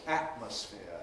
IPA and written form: ˈæʔməsfɪə (atmosphere)